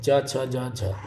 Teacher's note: व्यंजन जिनका उच्चारण करते समय मुखांगों द्वारा स्पर्श भी हो तथा हवा को बाहर निकालने में संघर्ष का सामना करना पड़े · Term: स्पर्श संघर्षी